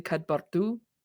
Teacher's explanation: like a little rolled R right in the middle